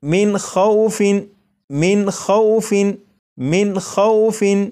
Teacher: اگر نون ساکن کے بعد ان 6 حروف میں سے کوئی بھی حرف ہو تو یہ جو نون ساکن ہے اسے ظاہر کر کے پڑھیں گے، جیسے آپ یہاں پر دیکھیں نون ساکن کے بعد خواہ ہے اور خواہ حروف حلقی میں سے ہے، اس لیے یہاں پر اس نون ساکن کو ظاہر کر کے پڑھیں گے، جیسے من خوف، من خوف، من خوف، تو یہ نون ساکن کو ظاہر کر کے پڑھا گیا۔